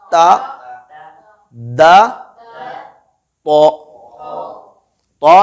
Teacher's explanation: ज़ुबान की जड़ ऊपर उठ जाती है, जिससे तो की आवाज भारी हो जाती है